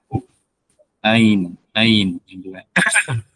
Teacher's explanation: Huruf ain merupakan huruf yang dikeluarkan dari katup epiglotis di tengah tenggorokan.